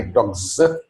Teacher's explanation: where the final s is preceded by a voiced sound g, why the s inflection is pronounced z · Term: voiced sounds